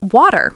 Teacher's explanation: In British English, it's closer to water with a clear T.